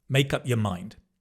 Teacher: the your often becomes ye